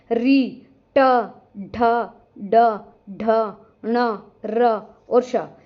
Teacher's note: जिन वर्णों के उच्चारण में जो हमारी जीभ है, मुर्धा मतलब दांतों के ऊपर जो हमारा खुरदरा सा स्थान है ना, वहां पर जाकर लगती है। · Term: मूर्धन्य